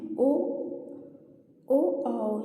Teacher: और लास्ट में है ओ आओ, यहाँ पे आओ होगा। ओ आओ का उच्चारण स्थान कंठ ओष्ठ से होता है।